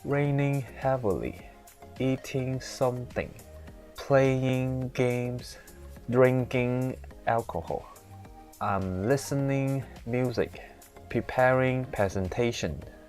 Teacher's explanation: in the middle of the sentence basically when you pronounce it you just need to speak a very flat pitch intonation just like a robot speaking in a flat peach tone